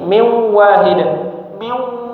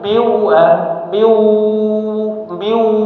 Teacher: ketika idgham bighunah, mulutnya sudah di huruf wau, tapi masih ada sisa dengungnya, sengau ya. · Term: idgham bi gunnah